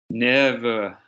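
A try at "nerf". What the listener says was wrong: Don't twang it, just say nerve. Just say normal. Good.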